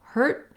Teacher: hurt is like a very short vowel with my tongue marking the T and no release.